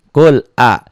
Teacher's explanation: Kul walaupun itu sebetulnya hamzah. Dibaca jelas idhar lam mati. A-nya qasar, kul a'u, nya juga qasar.